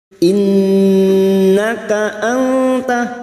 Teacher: Nun yang bertasdid gunnah musyaddadah kita dengungkan selama 3 harakat